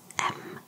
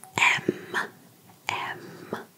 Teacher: in english we would say it shortly as m but in french we make it kind of a little bit longer so we would say m m so there is like we